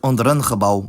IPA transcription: ˈɔndəɾ ən χəˈbɑu̯